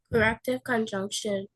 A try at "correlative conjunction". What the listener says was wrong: Close. Correlative. I didn't know that you said correlative. Sound like you said correct. It didn't sound like you say correlative.